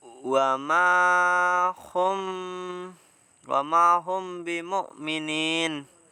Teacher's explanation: Bacaan dapat dikatakan sebagai bacaan ikhfa safawi jika mim mati bertemu dengan huruf ba. Cara membaca dengung.